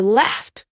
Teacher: If the verb ends in a voiceless sound like laugh, you say laughed with a t sound.